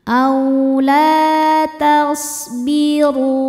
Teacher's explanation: Huruf ro dibaca tafkhim karena harakatnya di atas dommah maka ronya tebal. Dan ru hukumnya adalah mad thobi'i zohiri.